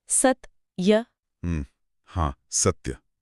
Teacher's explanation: स बोलने के बाद हमारी सांस आधे त पर जाकर टकराती है और थोड़ा रुकती है।